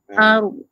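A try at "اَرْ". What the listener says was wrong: Ujung lidah saja naik. Jangan pangkal lidah.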